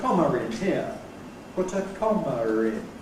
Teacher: most English people, under all normal circumstances, use ‘Intrusive R’ before a following vowel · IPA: [ ˈkɒmər ]